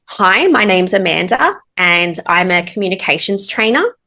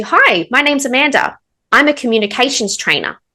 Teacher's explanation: So, you're sounding more confident by not using that rising tone at the end.